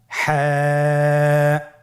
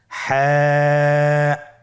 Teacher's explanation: হা হরফটি উচ্চারিত হবে কন্ঠনালীর মধ্যখান হতে। গলা চিপে ধরে আপনি উচ্চারণ করুন।